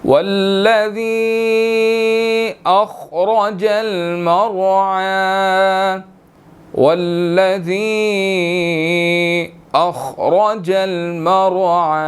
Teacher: ذی یا کے اوپر چھوٹی مد ہے، 1 to 2 سیکنڈز ہم نے اس کو کھینچ کر پڑھنا ہے